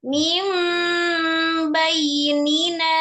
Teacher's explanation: Termasuk gunah yang tetap yang sempurna, yang kamilah. Berarti dia merubah nun sukun menjadi mim sukun disertai dengung atau gunah yang sempurna ya, maksudnya kamilah. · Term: Iklab